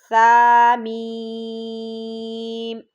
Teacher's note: ثا نرم حرف ہے، زبان کی نوک جب ہم اوپر والے دانتوں کے سرے سے لگائیں گے تو ثا ادا ہوگا